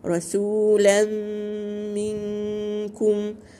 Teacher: تنوين بعده ميم إدغام كامل بغنة